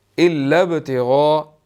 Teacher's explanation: با جو ہے وہ حروف قلقلہ میں سے ہے، یہاں پر قلقلہ ہوگا · غائن کے اوپر جو ہے وہ بڑی مد ہے، اس کو ہم نے 4 to 5 سیکنڈز لمبا کرنا ہے